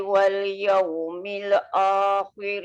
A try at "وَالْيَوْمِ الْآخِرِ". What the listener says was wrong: Dekat wal yaumil tu bawah sikit. Wal yaumil